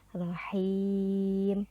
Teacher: dipanjangkan 4 sampai 6 harakat · Mim itu huruf hidup dan kita berhenti di sana atau kita berhenti membacanya di mim itu, maka itu terjadilah mad arid lisukun. Cara bacanya rohim, dipanjangkan 4 sampai 6 harokat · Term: Mad Arid lukun